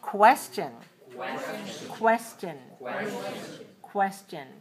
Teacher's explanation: why why why and then we have the hidden one question when we have a letter q u we have two sounds k and wha